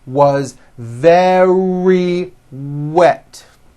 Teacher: remember very starts with a V sound followed by a strong R